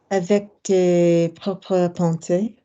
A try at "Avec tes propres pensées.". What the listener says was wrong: Don't do it with the speed.